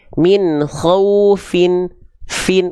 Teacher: pastikan dia mengalir ya Jangan jadi huruf P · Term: huruf Fa